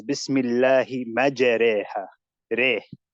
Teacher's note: bringing the fatha closer to the kasra. That's what it means in Tajweed. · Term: imala